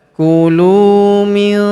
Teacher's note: Huruf lu kita panjangkan dua harakat karena wau sukun di depannya. Alifnya tidak dibaca.